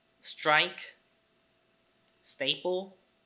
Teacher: unaspirated T can only exist in a consonant cluster